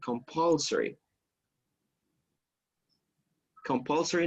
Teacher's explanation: you have the stress on the second syllable compulsory compulsory number of positions for women uh helped change that